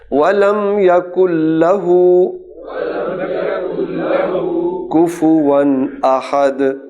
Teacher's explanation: ولم یکن، کاف پیش نون کن، اور نون ساکن کے بعد جب لام آتا ہے تو نون نہیں پڑھا جاتا، لام پڑھا جائے گا تشدید کے ساتھ